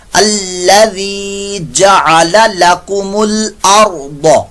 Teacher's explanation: ذال کی آواز میں زا کی آواز سے بھی بچاتے ہوئے الذی نہیں کرنا ذی.